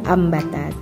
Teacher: Kita bisa melihat dari bacaan Quran surat Al-Baqarah ayat 261 ambatat. Nah, ini nun bertemu dengan huruf ba, jadi cara membacanya kayak ada huruf mimnya, ambatat ya.